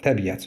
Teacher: Tələffüz zamanı i ilə ə arasında y səsi artırılmış olunacaq.